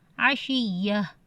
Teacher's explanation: اب گول تا جو ہے وہ ہا میں تبدیل ہو جاتی ہے وقف کے دوران